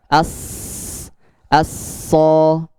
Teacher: Kemudian ingat, huruf isti'la penebalannya tanpa dua bibir, tanpa mengedepankan dua bibir. Penebalannya dari mana? Dari naiknya lidah yang belakang, bagian belakang. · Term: huruf shad